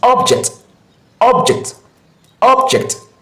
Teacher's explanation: It stresses the first syllable, which is the ob.